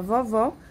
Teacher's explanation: o acento agudo teremos aí um som aberto como é na palavra vovó e já o circunflexo estaremos aí certo sou mais fechado vovô